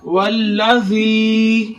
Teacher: जाल नरमी वाला हरफ है, नरमी के साथ अदा करें। जी पर याय मद्दा हो रहा है, या साकिन हो उससे पहले जेर तो याय मद्दा होता है। एक अलिफ की मुकदार खींच कर पढ़ेंगे। वल्लज़ी नून के ऊपर जबर है, बगैर खींचे पढ़ेंगे।